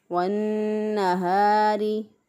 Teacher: नून मुशद्दद पर हमेशा गुन्ना होता है, इसलिए नून मुशद्दद पर गुन्ना करते हुए एक अलिफ के बराबर गुन्ना की मिक़दार को नाक में ठहराते हुए अदा किया। वन्नहारी, रा के नीचे ज़ेर है, इसलिए रा को बारीक पढ़ेंगे।